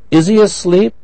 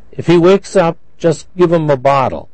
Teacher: the h was not pronounced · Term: reduction